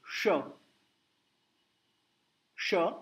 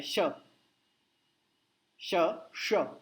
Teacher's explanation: षटकोण का श है ना, उसके लिए होठ थोड़े गोल कीजिए, श श, और सादा श में होठ दूर जाता है